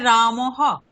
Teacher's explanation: বিসর্গের উচ্চারণ হকারের মত হবে